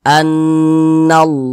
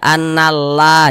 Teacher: Allah nih sebelumnya nih ada huruf yang memiliki tanda baca fathah maka lafaz Allahnya ini dibaca tebal dibaca tabkhim